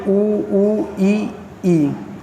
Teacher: समृत स्वर जिनके उच्चारण के समय मुंह लगभग बंद रहता है